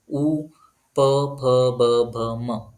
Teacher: उ, प, फ, ब, भ, म ज्यावेळेस उच्चार करणार त्यावेळेस दोन्ही ओठ टच होतात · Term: ओष्ठ्य वर्ण